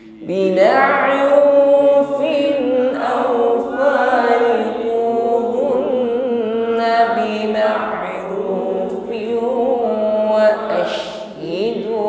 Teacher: dijaga nun tasydidnya, ya, ditahan dan didengungkan.